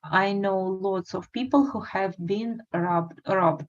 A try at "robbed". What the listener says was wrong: Robbed. Good.